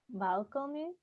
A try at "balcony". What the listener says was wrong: Balcony. Good.